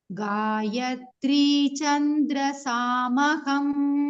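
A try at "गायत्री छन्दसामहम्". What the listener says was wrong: Chanda, not Chandra, Chanda.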